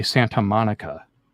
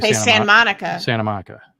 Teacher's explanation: we don't say Santa Monica we say Sant Monica Santa Monica we're actually losing the T together